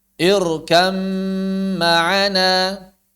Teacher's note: Ba bertemu mim diidghamkan